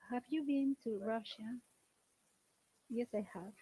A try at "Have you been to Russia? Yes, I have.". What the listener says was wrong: Look, it's a question. For the question, our intonation should be going up. Have you been to Russia? Look, you're asking a question. They should understand that you're asking a question.